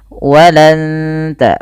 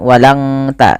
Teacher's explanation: Baik, ketika kita membaca ini jangan hanya walan tarda ankal yahud, tapi ditahan suara nunnya dan disamarkan ke huruf ta. Makhraj huruf ta ini ujung lidah menempel dengan perbatasan antara gusi atas dan gigi atas atau gigi seri atas, maka walan ta, bukan walang ta ya. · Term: ikhfa hakiki